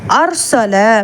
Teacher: இங்கே அர்சல அப்படின்னு சொல்லி ராவை நல்லா வல்லினமாக உச்சரிக்கணும். ஏன்னா அலிஃப்க்கு ஃபத்ஹா வந்திருக்கு, முன்னாடி உள்ள லெட்டருக்கு ஃபத்ஹா வந்திருக்கு.